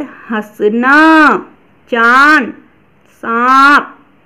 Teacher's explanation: इनका उच्चारण मुंह और नाक दोनों से किया जाता है